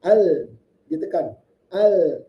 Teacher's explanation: ketika ada tasdid ini kita harus ada penekanan bacaannya al. Ditekan al.